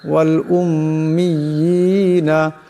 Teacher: মিম মুশাদ্দাদের একারে পরিমাণ গুণ্য হবে